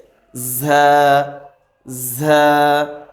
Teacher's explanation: উচ্চারণ হবে জিহ্বার আগা সামনের নিচের দুই দাঁতের আগার সঙ্গে লাগিয়ে